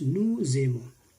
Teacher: we add the sound of S and A, so it becomes nous aimons